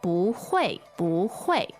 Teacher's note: Now, 不 is fourth tone, but when it follows by another fourth tone, it becomes a second tone. Okay, so instead of saying 不 会, we say, 不 会， 不 会。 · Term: tone change rule